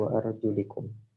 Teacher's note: Riwayah Imam Syu'bah mengkasrahkan lam menjadi wa arjulikum